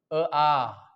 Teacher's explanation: अ आ यांचा उच्चार कंठातून होऊ लागला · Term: कंठी स्वर